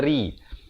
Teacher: Rihi, ri jadi nipis di sini. Jangan baca ri, itu tebal.